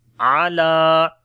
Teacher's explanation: عین کو گلے کے درمیان والے حصے سے پڑھیں گے، لام کو لمبا کریں گے